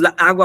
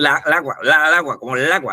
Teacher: Porque se están pegando esas dos As, ¿no? Y además la sílaba tónica de la palabra agua viene siendo esa primera A.